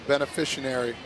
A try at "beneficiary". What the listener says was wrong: No, there's no N in there.